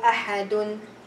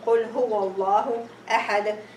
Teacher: So the tanween turned into sukoon, and this is Qalqalah due to stopping. The sukoon, sukoon due to stopping.